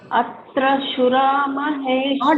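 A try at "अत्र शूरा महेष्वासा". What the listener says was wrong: Not, it is not a small shoe, it is shu. It is Dirgham. Atra Shura Maheshwasaha.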